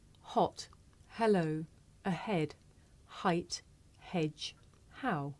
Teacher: this is a voiceless consonant it makes very little sound because it's really just your breath